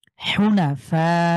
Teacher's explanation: ফা টাকে আমরা চার আলিফ মোটামুটি চার সেকেন্ড লং করে পড়বো · এক আলিফের পরে গোল হামজা থাকার কারণে আমরা এটাকে চার আলিফ টেনে পড়বো